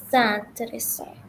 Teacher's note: Z sound because you have an S between two vowels.